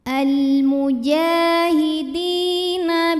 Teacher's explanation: panjang maka huruf Jim panjang dua harakat almujahidi di thii dahiri karena ada Ya Sukun sebelumnya baris kasrah maka huruf Dal panjang dua harakat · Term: Mad Thobi'i